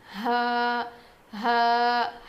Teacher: حلق کے نیچے والے حصے سے ادا ہوتا ہے